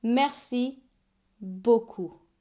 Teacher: And the P is silent, just like a lot of consonants in French when they are the last letter of a word.